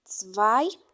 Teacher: si juntamos una E y una I, no sonará EI como en el español, sino que sonará AI